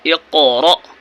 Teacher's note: جھٹکے کے ساتھ اقرا اور قاف پر قلقلہ کرنا ہے